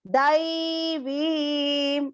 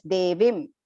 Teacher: Long dai, long vi. Do not make a mistake here of pronouncing it as devim. Absolutely wrong.